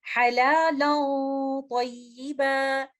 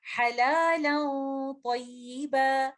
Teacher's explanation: میں نے لیٹر لام کو لائٹ رکھتے ہوئے صرف غنہ کو ہی ہیوی کرنا ہے